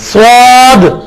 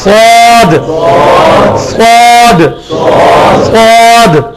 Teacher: اس کے بعد سواد ویسے ہی نکالنا ہے جیسے سین نکالتے ہیں, صرف جس طرح تا کو موٹا کیا تھا پا بنا تھا, سین کو موٹا کریں گے سواد بنے گا, مخرج وہی ہوگا سواد. سواد سین والی جگہ صحیح, تھوڑی سی زبان گول کر کے سواد سواد سواد.